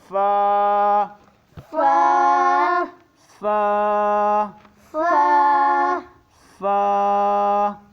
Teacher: नीचे के होंठ को जो है सामने के दोनों दांतों पे टच करना है